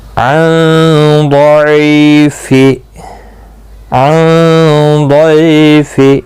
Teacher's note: ضاد مستعلیہ ہے, پر پڑا جائے گا. ضعی یا لین ہے, اس لیے ضعیف.